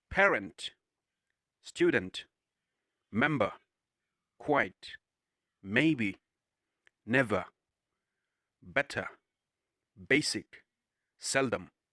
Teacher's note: Syllable ani oiba nouns and adjectives stress si anambana first syllable da pigani